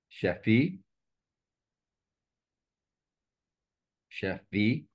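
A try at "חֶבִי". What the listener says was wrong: Chevi. It's a vet. The first word is chefi. The second word is chevi.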